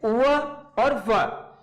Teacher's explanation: ये जो दोनों ही वर्ड हैं वो दांत और ओष्ठ दोनों के ही सहायता से बोले जाते हैं, इसलिए इनको दंत्योष्ठे कहते हैं।